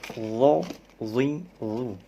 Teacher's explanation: bedanya huruf lo pangkal lidah naik, jadi suara tebal.